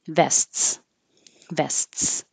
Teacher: we do stop and make the T